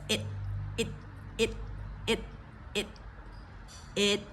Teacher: the T definitely a stop consonant there we catch it in the roof of our mouth